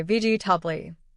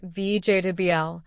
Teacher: Many learners say vegetable with 4 syllables. But in natural English, we say vegetable, only 3 syllables, and the middle part is very quick.